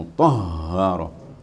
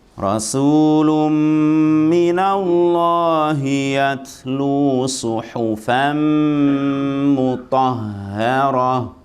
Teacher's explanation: Jangan gede-gede, jangan mutahharah. Ha di mana makhrajnya? Tenggorokan, enggak sampai dada.